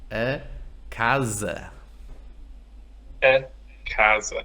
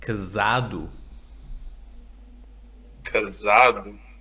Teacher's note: The S between vowels sounds like Z, right? The sound of the bees. Exactly. S entre vogais.